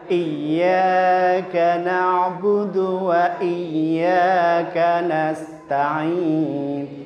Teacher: Dua-duanya ditasdid. Sehingga i jelas terdengar double.